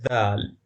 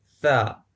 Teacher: اگر آپ ثا کو ادا کرتے ہیں تو آپ دیکھیں گے کہ کوئی تحرک اور لرزش پیدا نہیں ہوتی کیونکہ یہ بے صوتی آواز ہے